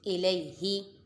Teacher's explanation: حمزہ متحرک، لام پہ یا لین اور ہا متحرک، یا لین کو بھی بغیر کھینچے بغیر جھٹکا دیے معروف پڑھیں گے